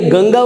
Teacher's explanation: ગંગા ઉપર જે અનુસ્વાર કાઢો તો ગગા થઈ જશે, એટલે કે ફરક પડી જશે, અનુસ્વારનો ઉચ્ચાર થાય છે